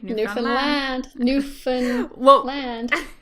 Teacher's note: secondary stress on the last syllable